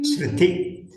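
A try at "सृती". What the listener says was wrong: நெடுல்தான் இருக்கு.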